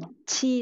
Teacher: Nhớ bật hơi nhá mọi người, để tay đằng trước xem đã có luồng hơi đi ra chưa nhá.